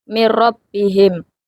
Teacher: nun mati dilebur tanpa gunah karena bertemu huruf ra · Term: Idgham bila gunah